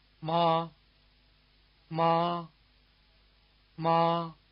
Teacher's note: The first tone is called the high tone. Its pitch is near the top of the speaker's range, and its contour is level